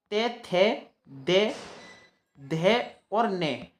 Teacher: ता वर्ग के पांच जो होते हैं त थ दे ध और न ये पांचों के पांचों दंत से बोले जाते हैं